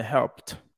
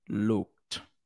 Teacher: If the verb ends in a voiceless sound like P in help or K in look, then the ed is pronounced like a T.